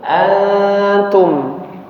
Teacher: Jadi nun sukun ketika bertemu dengan huruf ta dia samar-samar ya. Jangan diizharkan an bukan antum tapi antum.